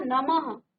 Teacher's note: तो ह का उच्चारण आ रहा है